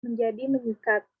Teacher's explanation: digantikan dengan fonem nasal NY yang ada pada prefiks me